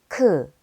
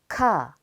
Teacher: 크, The letter kiuk is made by adding a stroke to 기역. Kiuk is a stop plosive with a stronger aspirated sound than g.